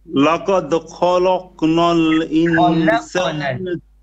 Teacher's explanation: Like the la is light. La qad qa is heavy. Kha la on the lam.